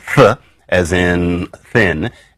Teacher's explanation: And an example of that is our friends, the interdental fricatives. And so we have our voiceless interdental fricative, th, as in thin